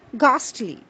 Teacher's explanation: the H sound is not produced the H remains silent